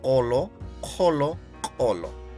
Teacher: La diferencia en este postvelar es que hay un alófono vocálico por la influencia de los sonidos postvelares. Por eso suena como O.